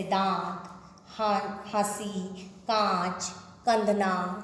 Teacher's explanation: यह ना तो स्वर है ना ही व्यंजन। इस ध्वनि को बोलते समय हवा नाक व मुंह दोनों से निकलती है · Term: अनुनासिक